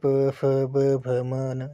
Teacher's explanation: जब हम इन व्यंजनों का उच्चारण कर रहे हैं तो ओष्ठों इनके दोनों ओठों का प्रयोग हो रहा है।